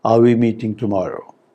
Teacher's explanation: if we say it with a falling tone then we will sound extremely rude so if i say are we meeting tomorrow this is unacceptable